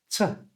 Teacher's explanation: It's just made with your breath. You can put your fingers on your throat, t, no vibration. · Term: voiceless sound